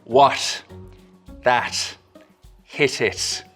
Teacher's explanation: it's a t sound made with a very soft closure at the tip of the tongue or not even really quite a full closure at all there's a slit left for the air to escape through what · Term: irish slit t, Irish slit T